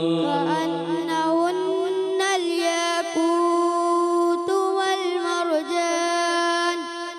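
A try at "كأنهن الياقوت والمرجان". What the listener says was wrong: याक़ूत ज़्यादा लंबा नहीं करना, ज़्यादा लंबा ख़राब हो जाएगा। कअन्नहुन्नल याक़ूत वल मरजान, रा पुर करेंगे, मोटा करेंगे।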